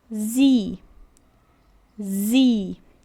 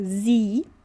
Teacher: O s sozinho aqui com som de z, com som de z e o i com som de i longo. Então fica zi.